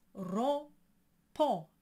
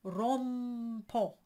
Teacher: And I also mentioned that when the nasalized sounds are followed by a consonant, like a B, or in this case a P, singers tend to close the M and they pronounce the M. But the M is not a consonant here. It's a modifier. It tells you that it's nasal.